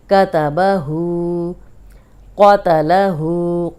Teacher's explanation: اب آپ نے الٹا پیش جو ہے اس کو 2 حرکات لمبا کرنا ہے